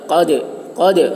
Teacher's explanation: قاف موٹی آواز میں، دال میں قلقلہ